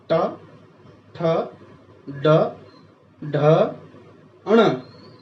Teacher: हमारी जीभ का आगे वाला पार्ट जो है, नोक नहीं, उससे थोड़ा सा पीछे वाला हिस्सा बिल्कुल बीच में लग रहा है, जाके हमारे ऊपर वाले तलवे में, बिल्कुल डीप वाली जगह में, तो उसको बोलते हैं तालु।